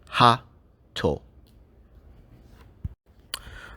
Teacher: what that small tsu actually represents is a short pause called a glottal stop. So for example, if we look at the word hato, we would write that ha, small tsu, and to.